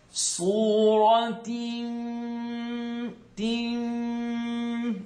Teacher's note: It's going to be held in the nasal cavity for at least 2 harakas, 2 counts. We're going to keep it there. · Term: nasaling sound